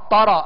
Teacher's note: را کو پر کرتے ہوئے تا کو جو ہے وہ پر نہیں کریں گے